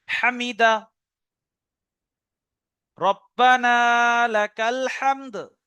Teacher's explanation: আর হা গলার মাঝখান থেকে, বড় হা